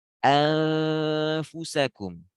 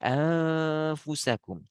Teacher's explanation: Jadi bukan anfusakum tapi bibir langsung ke gigi karena makhraj fa itu bibir ke gigi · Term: ikhfa